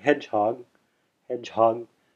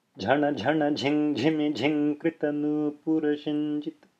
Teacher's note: Next one is JH. It's the same as J, except that it's aspirated. So there's a contraction of the diaphragm there to give that extra air.